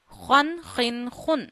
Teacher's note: So kha pronunciation is you read kha from the first part of your throat.